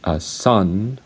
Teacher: Now, when you say alveolar sound, it is called an alveolar sound because the flow of air is stopped at the alveolar ridge. Now, your tongue touches the alveolar ridge, and so when you say sun, your tongue should touch the alveolar ridge and close your mouth, and you shouldn't close your lips.